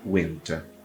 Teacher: o n entra dentro do T